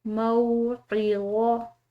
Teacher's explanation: عین حلق سے ادا کریں گے، یہ پر اور موٹے حروف میں سے ہے، ٹھیک ہے۔